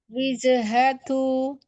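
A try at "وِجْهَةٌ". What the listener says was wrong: Wije, wije. Di sini agak ngalir sedikit jimnya. Coba lebih sidah lagi. Wije.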